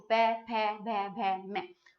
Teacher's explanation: ओष्ठ से बोले जाते हैं, होठों से बोले जाते हैं।